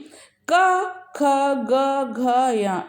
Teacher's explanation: जैसे क, ख, ग, घ, या, इनको अगर हम बोलेंगे तो हमारे कंठ का प्रयोग हो रहा होता है